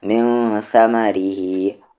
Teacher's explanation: را یہاں پر لائٹ ہوگا، کیوں؟ کیونکہ را کی ساؤنڈ نیچے ہے